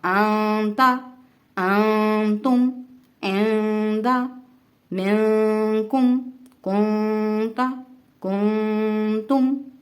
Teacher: ان تمام حروف میں ہم نے نون کی آواز کو ناک میں چھپایا ہے۔ اس چھپانے کو اخفا کہتے ہیں۔